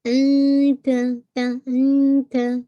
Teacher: انتا ٹھیک ہے، ناٹ انتا، ان نہیں، نون کا ساؤنڈ آپ کو ہائڈ کرنا ہے، اخفا ہے نا. تو آپ تا کے مخرج کے پاس اپنی ٹپ آف دا ٹنگ کو رکھیے. انتا تا انتا ٹھیک ہے، تا کے ناٹ تا تا تا اتا.